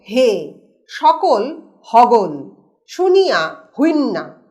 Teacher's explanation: তালব্যস এবং দন্তস ধ্বনি আমরা দেখছি হ ধ্বনিতে পরিণত হল · অঞ্চল বিশেষে দন্তস্য এবং কালব্যস ধ্বনি হ ধ্বনিতে পরিণত হয়